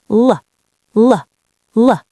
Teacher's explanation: L means your tongue touches the roof of your mouth right behind your top teeth.